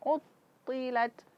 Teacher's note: Ah suara ini tidak boleh keluar di huruf th. Karena huruf th itu tertahan nafas dan tertahan suara sehingga dia bersifat qalqalah